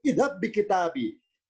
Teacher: dengan dihilangkannya bunyi pantulan, dengan dihilangkannya bunyi qalqalah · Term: idgham